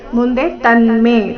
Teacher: ಬ್ರೂಹಿ ಬೃಹ ದೀರ್ಘ ಹಿ ರಸ್ವ